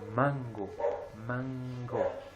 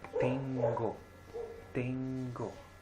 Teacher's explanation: sí Entonces se la la parte de la de la lengua va a ser como cerrar y terminar de pronunciar con la nariz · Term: pronunciación nasal